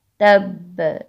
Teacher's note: با کے اوپر شد بھی ہے اور ہم اس کو ساکن بھی کر رہے ہیں، یعنی با ساکن کرنی ہے اور ساتھ تشدید بھی ہے، تو قلقلہ زیادہ واضح کریں گے